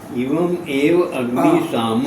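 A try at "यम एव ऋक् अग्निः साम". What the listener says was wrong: एक मिनट, गलत हो गया। यम एव ऋक् अग्नि शामः। ऋक्, ऋक् है वो बीच में नहीं, ऊपर र है ना, ग हुआ संधि से तो ऋक् है।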